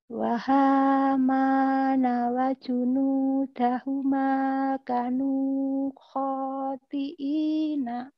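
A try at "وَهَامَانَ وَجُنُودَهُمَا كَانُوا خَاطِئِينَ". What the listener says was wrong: Oke, kaknya panjang.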